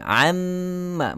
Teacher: Kita baca dengan amma masuk dalam mim. Nun pada bahagian lidah tidak lagi berfungsi. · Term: idgham